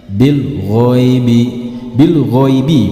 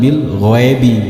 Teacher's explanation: huruf ya berharakat sukun itu suaranya condong ke suara I Bil ghoibi Bil ghoibi bukan Bil ghaibi bukan Bil ghaibi bukan